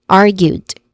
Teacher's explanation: First syllable is R, which is the stressed syllable. It has a short A vowel sound.